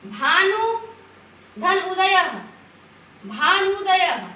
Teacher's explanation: भानु में हरस्व है और उदय में हरस्व है, दोनों मिलकर के यहाँ पर दीर्घ ऊ बन गया है।